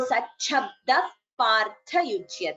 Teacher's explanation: So here visarga followed by pa, we get upadhmaniya. · We don't chant the visarga completely.